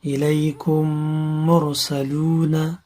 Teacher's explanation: میم را پیش مر، سین زبر سا، لام و پیش لو، نون زبرنا، الیکم مرسلون. یہاں پر یہ میم اس میں مدغم ہوا اور غنہ بھی ادا ہوا